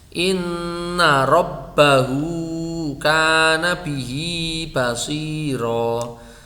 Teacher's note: Lafat robbahu atau bihi itu kalau wasol itu malah dibaca panjang satu alif. Ketika wakof itu malah dibaca sukun.